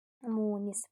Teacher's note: Birinci sait səs deməli, sait səs uzun tələffüz olunur.